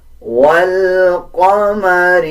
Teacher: قاف کو پر یعنی موٹا پڑھا جائے گا